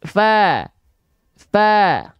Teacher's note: Ya, maka huruf fa jangan jadi huruf P, sudah kita ketahui kenapa. Pastikan dia mengalirkan hembusan angin atau nafas dari mulut, nama sifatnya adalah hams.